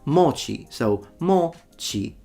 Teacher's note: It's a heiban pattern, so one of those low to high pitches in Japanese, but he doesn't know that. He is pronouncing it in the atamadaka pattern that goes from high to low